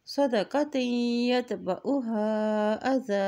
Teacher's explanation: خیر من صدقۃ یتبعها اذی، یہاں دیکھیں تا کی دو زیر کو یا کے ساتھ ملاتے ہوئے پڑھیں گے کیونکہ یا کے اوپر شد ہے